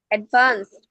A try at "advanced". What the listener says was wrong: শেষে ট উচ্চারণ হয় না অ্যাডভান্সড হুম